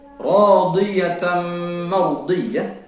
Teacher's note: terdapat hukum bacaan idgham bi gunnah karena terdapat tanwin yang bertemu dengan mim. Jadi cara bacanya adalah memasukkan suara tanwin kepada mim. Radiyatan mardiyah, tidak boleh dibaca radiyatan mardiyah atau radiyatan mardiyah tanpa dengung.